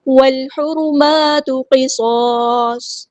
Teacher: واو کو ہم نے لام کے ساتھ ملا دینا ہے، حمزۃ الوصل ہمارا ڈراپ ہو جائے گا ، لام یہاں پہ لام قمریہ ہے، اس کو